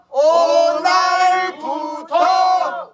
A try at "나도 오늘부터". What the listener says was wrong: 부가 똑같아. 오하고 부가 똑같아 해야 돼. 오늘부터